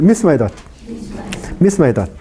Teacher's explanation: no se forma el diptongo sino siempre se mantiene el yato · misma edad a ver misma edad misma edad no hay pausa no hay pausa entre a y e se pronuncia como si fuera una sola sílaba pero en realidad son dos sílabas diferentes no se forma el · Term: hiato